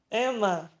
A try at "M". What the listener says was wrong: Então, mas em vez de Emma, firme, você vai fazer M. M. Só que você tá falando Emma. M. M. Isso, essa é a pronúncia do M, do alfabeto. No alfabeto a gente aprende a pronúncia do M. Essa é a pronúncia do M.